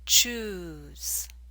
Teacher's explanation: The ooh in choose makes you round your lips.